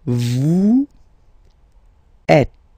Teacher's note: Notice that final S is not pronounced.